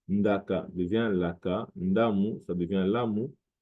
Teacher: Le O peut se prononcer U en lingala, tout comme on a Mohamed ou Mohamed en arabe. Le ND ou bien le D peut aussi parfois se prononcer L.